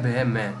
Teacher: दोनों होठ आपस में आके छू जाएंगे